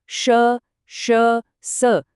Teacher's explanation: ऊष्म ध्वनियां हवा के घर्षण से बनती हैं, एक फुसफुसाहट जैसी आवाज।